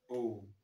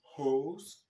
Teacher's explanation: Mais le son O en anglais se prononce de manière longue. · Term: long vowel sounds